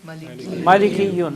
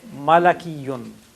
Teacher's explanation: This is dissimilation, where you have E followed by A, not E. It should have been followed by E, but it is difficult to pronounce.